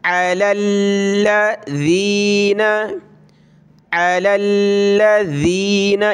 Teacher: الذین، علی الذین، اس کی جگہ پہ زا نہیں پڑھنا، زین، سخت کر کے نہیں بلکہ زبان نکال کر اس کو ذال کو پتلا پڑھا جاتا ہے